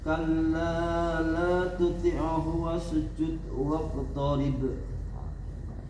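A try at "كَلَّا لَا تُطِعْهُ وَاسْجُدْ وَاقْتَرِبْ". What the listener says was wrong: Nanti biasakan ketemu dengan huruf-huruf qalqalah dipantulkan, ya, itu yang kurang. Jangan kecil, memang ada pantulan tapi kecil, tapi besarkan dengan suara. qalqalah itu ada berapa hurufnya? 5. Ketemu ba, ketemu jim, ketemu dal, kemudian qaf, kemudian ta. Ini 5 huruf. Nah, ini 5 huruf yang harus dipantulkan.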